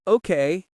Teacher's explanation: When you say a flat, bored, Okay, that's close to the first tone.